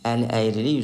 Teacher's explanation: burda əli sözündəki i saiti tələffüzdə düşmüşdür.